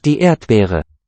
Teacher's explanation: It's not really a voiced B.